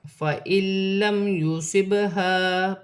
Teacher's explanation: با ساکن ہے، حرف قلقلہ میں سے ہے، قلقلہ کے ساتھ ادا کیا جائے گا